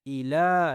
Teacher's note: لام کو میں نے کھینچا، لام کے اوپر کھڑی زبر ہے